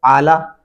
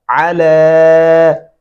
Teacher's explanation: आला नहीं पढ़ना, अला। लाम के ऊपर खड़ी ज़बर है, हम आवाज़ को लंबा करेंगे